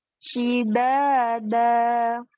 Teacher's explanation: Ingat huruf da, ujung lidah bertemu dengan gigi seri atas.